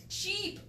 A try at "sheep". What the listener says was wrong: Good job.